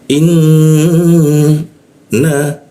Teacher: Artinya apa? Artinya nun bertasdid atau berwarna pink, maka kita tahan 2 ketukan di tasdidnya